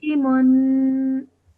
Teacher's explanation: the tanween sound, the nasal sound is made at the end and it's stretched for 2 seconds